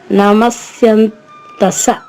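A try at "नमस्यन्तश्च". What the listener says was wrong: స కాదు చివర నమస్యంత పోనీ నమస్యంత అని చెప్పండి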